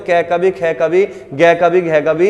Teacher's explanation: जो हमारे मुख से हवा निकलती है वो डायरेक्ट हमारे गले से एकदम बाहर निकलती है, तो इसी को हम कंठ बोलते हैं।